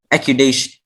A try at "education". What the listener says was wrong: Education. Accudation. Education. The C and the D. Education.